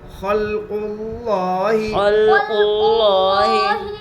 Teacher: لام کے اوپر جزم ہے، جزم والے حرف کو پیچھے والے حرف سے ملا کر پڑھتے ہیں. لام میں قلقلہ نہ ہوگا اس لیے کہ لام قلقلہ کے پانچ میں سے نہیں ہے. قاف کے اوپر پیش ہے، پیش کو جلدی پڑے تھوڑا بھی نہ کھینچے. · الف لام تعریف کے بعد حروف شمسی کے 14 حروف میں سے لام ہیں، اس لیے الف اور لام کو نہ پڑھیں گے بلکہ بعد والے حرف سے ملا کر پڑھیں گے. لفظ اللہ کے لام سے پہلے پیش ہے اس لیے لفظ اللہ کے لام کو پور پڑھیں گے